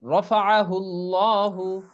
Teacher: আল্লাহ শব্দের লামের ডানে যদি জবর কিংবা পেশ থাকে তবে উক্ত লামকে সবসময় মোটা করে পড়তে হয়। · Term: পোর